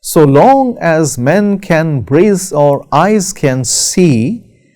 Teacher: so is not stressed long is stressed · Iambic because it consists of an unstressed syllable and then a stressed syllable. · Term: iambic pentameter